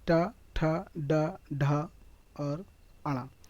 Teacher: टा वर्ग को मूर्धन्य वर्ग कहा जाता है।